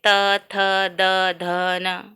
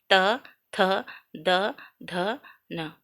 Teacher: तो ये दांत को स्पर्श करते हैं। इसलिए इसको दंत्य कहते हैं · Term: दंत्य वर्ण